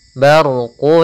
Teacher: Kemudian barqu, di sini ada huruf ra yang berharakat sukun sebelumnya fathah, kita namakan dengan ra tafkhim, ra yang tebal.